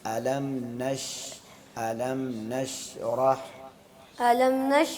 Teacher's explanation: पहली आयत पढ़े डायरेक्ट अलम नश का सदर अलम अलम पे गुना नहीं है। अलम को जाहिर करके पढ़ना।